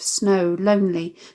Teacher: Note the assonance of the long /oh/ vowel here which similarly stretches the sound to enhance this image.